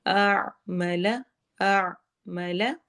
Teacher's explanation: عین میں حلق میں آواز جائے گی، پہلے حمزہ ادا ہوگا پھر عین